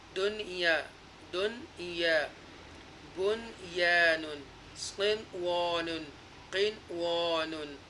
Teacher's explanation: Nasalization, gunna will not take place. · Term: izhar mutlik